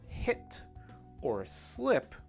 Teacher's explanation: if we want to say the words hit or slip we need to bring that sound a little bit back a little bit back in the mouth